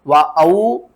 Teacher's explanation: واو ساکن سے پہلے پیش ہے تو اس کو ہم نے کھینچ کر پڑھنا ہے